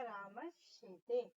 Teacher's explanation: यहाँ पे दंत स के बाद तालव्य श आया है, तो दंत स हमारा तालव्य श में परिवर्तित हो जाएगा, तो हमारा शब्द बनेगा राम शेते।